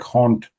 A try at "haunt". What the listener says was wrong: Yeah, it's not too. So it sounds like you're saying hunt, but this is haunt.